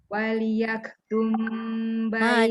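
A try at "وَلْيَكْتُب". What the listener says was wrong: Tak ada mim. Wal yaktub bainakum katibun bil adl.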